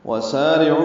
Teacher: وَسَارِعُوا، وہ ہونٹوں کی ناتمام گلائی سے ادا کریں گے۔ سا سین ہے صفیریہ میں سے، صفیر کی آواز سے یعنی سیٹی کی آواز سے ادا ہوگا۔ وَسَارِعُوا، یہ باریک پڑھیں گے، را بھی باریک ہے، عو بھی مد منفصل ہے، وہ مدہ کے بعد دوسرے کلمے میں حمزہ آیا ہے۔